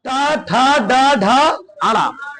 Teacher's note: इन 5 अक्षरों को बोलोगे जो हमारा जीभ होता है ना, वो आगे जाके सांप नियर घूम जाता है ऐसे। मतलब हमारा जो जीभ होता है आगे जाके घूम जाएगा, तो उसी को हम लोग कहते हैं, उसी को हम लोग कहेंगे मूर्धा।